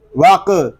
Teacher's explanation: وس جد، واو قاف زبر وق، یہاں الف زائد ہے، قاف کو پر پڑھیں گے، قاف ساکن ہے، اس میں کلکلا بھی ظاہر کریں گے